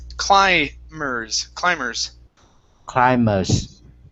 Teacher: Now, in this word, the B is silent. Instead of climbers, it's climbers.